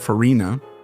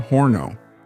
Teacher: the disappearance of the Latin F at the beginning of a word. That is, the suppression of this sound, as in the case of farina, which became harina, or forno, which became horno, among many other cases.